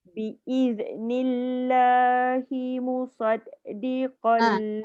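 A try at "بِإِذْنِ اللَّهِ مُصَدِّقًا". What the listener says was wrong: Ada bunyi beranak dal tu. Saya faham dal tu memang sifat dia melantun, tapi bila dia bersabdu dia tidak dibolehkan untuk membaca musaddiqal. Jadi lagi banyak huruf tu keluar. Musaddiqal.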